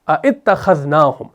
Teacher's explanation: تو بعد والا حمزہ مکسور آپ کا حذف ہو گیا، تو ابھی آپ کا پہلا والا حمزہ قطعی رہ گیا